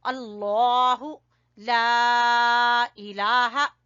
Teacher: लफ्ज अल्लाह को मोटा पढ़ेंगे